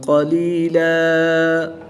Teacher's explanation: دو زبر کی تنوین کو وقف کی حالت میں الف مدہ سے تبدیل کر کے پڑھیں گے